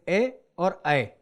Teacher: कंठ और तालु में जीभ के स्पर्श से बोले जाने वाले वर्ण जैसे ए और ऐ। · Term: कंठ तालव्य